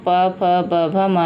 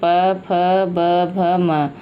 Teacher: ये 5 व्यंजन ओष्ठ से बोले जाते हैं। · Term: ओष्ठ वर्ण